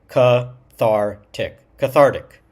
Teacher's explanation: you can tell that the emphasis is really on the second syllable here. Thar.